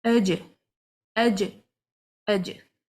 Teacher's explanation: And these arrows also indicate the sound is blocked, it's imprisoned. Because for the jim, the tongue from the middle is touching the hard palate. Now you need to apply the qalqala, bounce the sound of the letter.